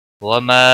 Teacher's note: وما مد منفصل ہے، 3 الف کے برابر کھینچ کر پڑھیں گے